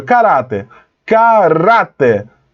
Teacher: caráter, a sílaba tônica é rá, mas olha onde foi colocado o acento, no K.